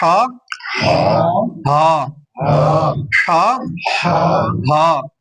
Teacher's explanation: ہا دوسرے حلق سے پڑھے